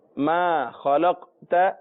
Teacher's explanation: لام کو جب قاف سے ملائیں گے تو حروف مستعلیہ ہونے کی وجہ سے پر ہوگا، لیکن تا ہے اس کے بعد طا نہیں ہے، اور تا اور طا میں فرق ہے جو پچھلے اسباق میں بیان کیا جا چکا ہے۔